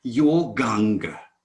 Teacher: when the vowel ah is followed by the vowel ah both merge into one ah